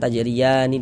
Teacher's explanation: Kalau kita tidak berhenti, tidak berwakaf di huruf nun, tidak berhenti di huruf nun, nah kita wasolkan tajriyani dan seterusnya langsung kita wasolkan, maka panjangnya ya tetaplah menjadi mad tabi'i dan dibaca dengan panjang 2 harokat